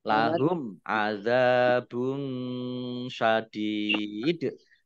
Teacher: Dhammah tanwin bertemu dengan huruf shin, bacaan ikhfa, dibaca samar-samar. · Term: izhar safawi